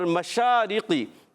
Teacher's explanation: اور مشارقی, میم پر زبر ہے, حرکتیں نہیں کھینچیں گے, مگر شین پر کھڑا زبر ہے, ایک الف کھینچنا ہے. شین کا مخرج زبان کا درمیان، اوپر تالو کا درمیان، وسط زبان وسط تالو سے 3 حروف ادا ہوتے ہیں، جیم شین یا، ان کو کہتے ہیں حروف شجریہ۔